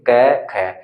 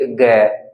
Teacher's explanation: ऐसी कुछ मोटी सी आवाज होगी, यानी कि कुछ कंपन के द्वारा बोलेंगे